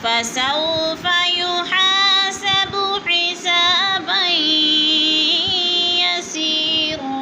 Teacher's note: यसी, या मद्दा है, या साकिन से पहले सीन के नीचे ज़ेर है तो या मद्दा, दो अलिफ के बराबर खींच कर पढ़ना है।